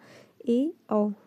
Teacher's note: इसमें half open होता है, इसमें आपका जो फेस होता है, मुख जो होता है, मुंह जो होता है वो आधा खुला होता है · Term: अर्ध विवृत